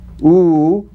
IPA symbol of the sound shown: u: